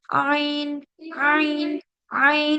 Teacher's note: आइन भी हमारा यहीं से अदा होगा, middle part of the throat से। इसमें आपको बिल्कुल नॉर्मली बोलना है आइन, आइन, आइन।